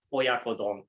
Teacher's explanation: There's no real syllable that gets a stress.